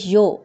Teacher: ہونٹ گول ہوں گے پیش کی ادائیگی کے لیے، دونوں مجہول نہیں ہوں گے، دونوں لمبے نہیں ہوں گے